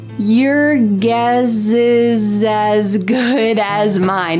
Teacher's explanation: We are linking together the s plus a vowel from the next word.